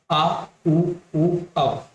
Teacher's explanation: पश्च भाग ये जीभ के पीछे वाले भाग से उच्चारण होती है।